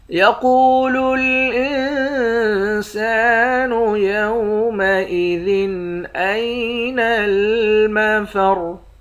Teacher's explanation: سین کے بعد الف ہے، الف حرف مدہ ہے، ایک الف کی مقدار کھینچ کر پڑھتے ہیں، آخر میں را ساکن ہے۔